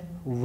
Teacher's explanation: व वर्ण का उच्चारण स्थान भी 2 स्थानों से माना गया है दंतोष्ठ, दंत और ओष्ठ, इसीलिए व को दंतोष्ठीय वर्ण भी कहा जाता है।